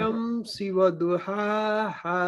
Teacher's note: والشمس وضحاها دونوں کو سیم لمبا کرنا ہے, ایک الف کے برابر